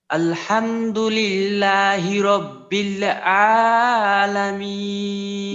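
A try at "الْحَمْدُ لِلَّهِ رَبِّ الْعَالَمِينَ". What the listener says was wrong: মাশাআল্লাহ, প্রথম লামটা ঠিক আছে, পরের লামটাতে আরো একটু চেষ্টা করা, যে ওই লামের মাখরাজে থাকা অবস্থাতেই আইনের মাখরাজে যাওয়া। হ্যাঁ মাশাআল্লাহ, প্রথম লামটা ঠিক আছে।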